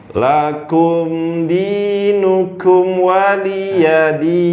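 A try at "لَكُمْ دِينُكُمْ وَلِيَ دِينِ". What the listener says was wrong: Dinukum mimnya sempurna, jangan buru-buru. Hati-hati kesalahan huruf, hati-hati kesalahan panjang pendeknya, ya.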